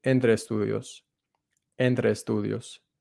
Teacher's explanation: The two words are going to run together.